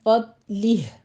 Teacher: آگے ہا کی ساؤنڈ آپ لے کر آئیں گے جب آپ نے وقف کرنا ہے ، تو صرف اس کو فضلی کہہ کے چھوڑنا نہیں ہے،